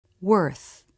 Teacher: Ending in the unvoiced TH. Again, the lips and tongue look very relaxed.